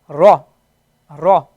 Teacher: when you put a fatha on it, right? It doesn't give you the a sound, but it gives you the o sound, the o. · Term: round letters